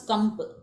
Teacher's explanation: Atra originally nakara, then it gets converted to anuswara, then once again to makara. So this anuswara to makara is parasavarna.